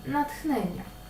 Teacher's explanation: слово натх хнення нічого пов'язаного з асиміляцією тут не відбувається адже і на письмі буде ТХ і у вимові буде ТХ тобто дві глухі